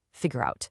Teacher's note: We don't say figure out. Everything flows into one single smooth word.